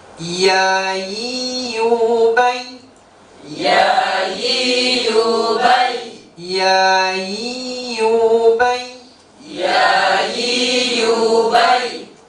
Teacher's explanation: Ya itu terasa di tengah-tengah lidah mengenai langit-langit yang ada di atasnya. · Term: huruf ya